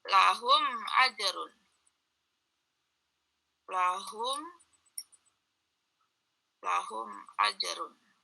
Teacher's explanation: Di sini ada mim mati bertemu dengan huruf alif. Itu maka dibaca jelas. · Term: izhar syafawi